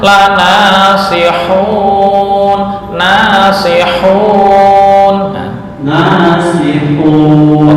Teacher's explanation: makhraj yang di tengah tenggorokan atau wasatul hal